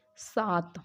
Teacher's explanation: इसमें जो भी अलग प्राण हैं वो महाप्राण में परिवर्तित हो जाते हैं, जैसे साथ, तो साथ मतलब ये दूसरा है, ठीक है, दूसरा महाप्राण, थ महाप्राण में आ गया, लेकिन उसको पहला वर्ण बना देंगे अल्प प्राण, सात, तो मतलब महाप्राण ध्वनि की जगह यहाँ पे अल्प प्राण ध्वनियों का प्रयोग किया जाता है।